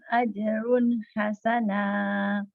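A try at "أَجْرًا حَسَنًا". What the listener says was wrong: Ajro bukan ajrun tapi ajron hasana fathah tanwin ya. Alladzina ya'maluna sholihati anna lahum ajron hasana. Ajron bukan ajrun tapi ajron hasana ya.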